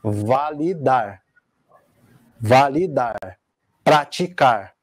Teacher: começando pela oxítona né que a sílaba tônica é a última